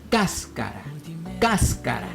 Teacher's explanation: La palabra cáscara, por ejemplo, tiene el acento en la sílaba cas